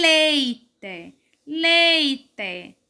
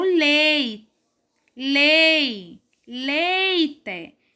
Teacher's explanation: E em leite, leite. A sílaba mais forte é o lei, lei, leite